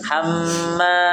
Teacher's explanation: Bukan hammal, tapi hamma dua harakat.